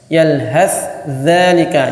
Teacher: Jadi sama makhrajnya, sa dan dza itu sama-sama di ujung lidah yang diapit dengan dua gigi atas dan gigi bawah, itu seri atas, gigi seri bawah.